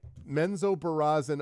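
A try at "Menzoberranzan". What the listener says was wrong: It's an N in there.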